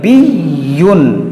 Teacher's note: یا پر تشدید ہے، اس کو بھی 2 بار پڑھیں گے